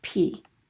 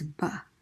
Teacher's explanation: that's different is whether your vocal cords are vibrating or not they're in the exact same location they are set in the exact same manner